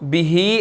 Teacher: हा के नीचे खड़ी ज़ेर है, इसको 1 सेकंड हमने लंबा करना है